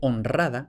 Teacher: convertir la R suave en R fuerte